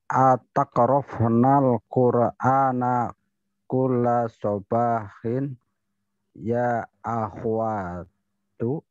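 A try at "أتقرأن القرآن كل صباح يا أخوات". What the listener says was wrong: Baik, mumtaz.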